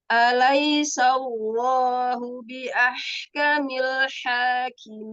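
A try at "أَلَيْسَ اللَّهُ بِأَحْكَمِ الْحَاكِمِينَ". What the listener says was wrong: Nah, pada lafaz Allah, tebalkan lagi. Alaisallahu. Jangan tertutup. Sallahu. Naik suaranya. Buka. Sallahu. Buka. Nah, mengepung huruf lam, huruf lafdzul jalalah, itu jangan sampai dia nggak terbuka.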